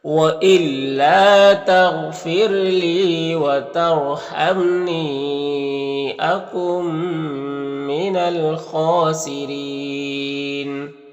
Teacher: خا حروف مستعلیہ میں سے پر پڑھیں گے اور کھڑا زبر ہے، ایک الف کے برابر کھینچیں گے. را کے نیچے زیر ہے تو را کو باریک پڑھیں گے اور یہاں پر وقف کریں گے تو مد عارض وقفی ہوگا، تو اس طرح سے پڑھیں گے. · لی میں یا مدہ ہے، ایک الف کے برابر کھینچیں گے. یہاں پر را ساکن سے پہلے تا کے اوپر زبر ہے تو را کو پر پڑھیں گے · الف لام حروف قمری، خا کے شروع میں ہے تو لام کو پڑھیں گے، الف کو نہیں پڑھیں گے. خا حروف مستعلیہ میں سے پر پڑھیں گے اور کھڑا زبر ہے، ایک الف کے برابر کھینچیں گے.